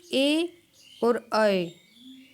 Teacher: ए और अ इनका उच्चारण स्थान कंठ तालू दोनों से होता है